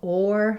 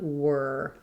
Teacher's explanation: It actually is the beginning of this word is the same as in the word were. So you really want to focus on just having a tight back R with no sliding into it